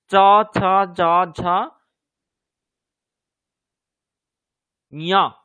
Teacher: চ ছ জ ঝ ঞ এগুলো যখন আমরা উচ্চারণ করছি তখন আমাদের জিহ্বাটা তালু স্পর্শ করছে। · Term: তালব্য বর্ণ